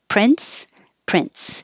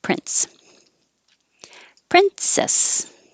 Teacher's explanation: Whether you put a T in there or not, moving from the N to the S sound will create one. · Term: a little T